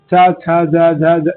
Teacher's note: इस सबका उच्चारण तालु से होता है